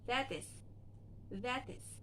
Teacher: the T sound between the vowel, it can be flapped. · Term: flap T